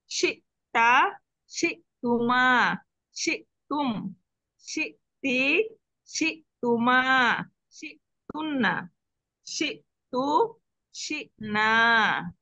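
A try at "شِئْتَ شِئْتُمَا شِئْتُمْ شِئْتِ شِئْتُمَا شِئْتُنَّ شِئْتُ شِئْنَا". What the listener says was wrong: আচ্ছা, মাশাআল্লাহ, অনেক সুন্দর হয়েছে।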